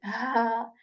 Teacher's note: this letter is articulated from the portion of throat that is near to our chest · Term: letter of throat